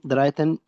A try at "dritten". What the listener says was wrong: यूली द्रिटन, द्राई नहीं द्रिटन। स्पेलिंग होता है DRITTEN, द्रिटन। इसका द्राई से लेना देना नहीं है।